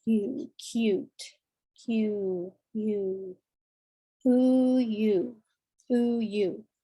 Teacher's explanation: If you look in the mirror, your mouth is again with a long U. It's very rounded.